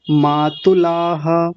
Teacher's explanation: बड़ा ऊ नहीं बनाना, छोटा ऊ है